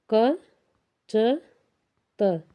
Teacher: इसमें क, च, त, जिसमें हवा कम निकलती है ये होती है अघोष। और सघोष में जिसमें स्वर जो है स्वर यंत्र से ध्वनि निकलती है।